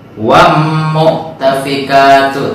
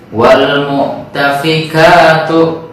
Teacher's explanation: Maka kita jangan membacanya wam mu'tafikatu, tapi wal mu'tafikatu. Wal alnya terdengar dengan jelas.